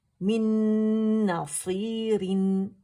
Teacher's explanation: और रिन बारीकी से होगा क्योंकि कसरतैन है · नून नून के अंदर मर्ज हो गया, तो नून डबल हो गया और मुशद्दद हो गया, और अकमल ग्रेड का यहाँ गुन्ना करेंगे। यहाँ कंप्लीट मर्जिंग विद गुन्ना हो रहा है, ठीक है, यानी इदगाम ताम, इदगाम कामिल बिल गुन्ना। · अच्छा, अरबी मुसहफ में आप पे यहाँ को सुकून का साइन नज़र नहीं आएगा क्योंकि नून नून के अंदर मर्ज हो गया, तो नून डबल हो गया और मुशद्दद हो गया, और अकमल ग्रेड का यहाँ गुन्ना करेंगे। यहाँ कंप्लीट मर्जिंग विद गुन्ना हो रहा है